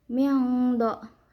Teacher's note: Cara bacanya disamarkan sambil berdengung. Miangdori ri dibacanya secara tarkik atau tipis karena ro-nya barisnya di bawah atau kasroh. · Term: ikhfa ausat